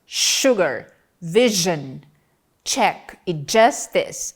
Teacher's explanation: As consoantes palatoalveolares, também chamadas de alvéulopalatais ou pós-alveolares, são produzidas entre os alvéolos e o palato duro, que são os articuladores passivos, e tem a língua como articulador ativo. J T D J das palavras sugar, vision, check e justice, respectivamente, são palato alveolares.